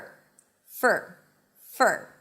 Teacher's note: when the word for is unstressed, and that's usually the case, then the for is reduced to fur. F for f for And yes, it sounds just like the word fur, like a dog's fur.